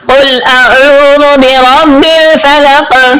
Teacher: عین کو حلق کے درمیان والے حصے سے پڑھتے ہیں · برب الفلق، قاف پہ آخر پہ آپ نے قلقلہ بھی کرنا ہے